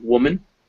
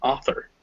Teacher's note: it's a little unpronounced vowel in english it's like the a in woman the i in pencil or the o and author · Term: schwa